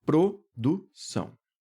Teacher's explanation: o vocábulo produção apresenta um ditongo nasal. Sim, porque esse som sai pelo nariz